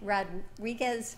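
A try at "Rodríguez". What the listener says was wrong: Now you see, what happened? You lost the R. Rodriguez. Oh, you used the R.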